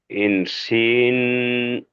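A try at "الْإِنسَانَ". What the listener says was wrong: না, এটা লাম দেখেন, আমি আপনাকে একটু বলে দিই, লাম যখন থাকবে তখন এইদিকে একটু বাঁক থাকবে। এখানে কোনো বাঁক নেই, এটা এইদিকে বাঁক আছে, তো এদিকে নেই, তাহলে এটা আলিফ হবে। সিন আলিফ জাবার সা।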